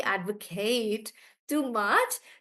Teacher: when I use it as a verb I'm stressing on the last part